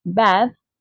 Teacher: The vowel in bad is longer because it comes before a voiced consonant, the letter D.